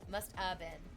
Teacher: The have doesn't need to be fully pronounced.